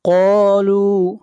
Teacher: قاف کو موٹا پڑھیں گے، قاف حروف مستعلیہ میں سے ہے، اور قاف کو کھینچ کر پڑھیں گے 1 الف کے برابر، یہاں پر الف مدہ ہے۔